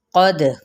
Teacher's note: قاف پر پڑھا جائے گا، دال پہ قلقلہ ہوگا